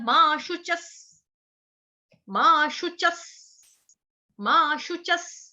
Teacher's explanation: विसर्ग का उच्चारण होगा हलंत स, आधा स